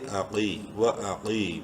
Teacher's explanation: واو زبر وا، حمزہ زبر آ، وا، قاف یا زیر قی، قاف کو منہ بھر کے پڑھنا ہے، ایک الف برابر لمبا بھی کرنا ہے یا مدہ کی وجہ سے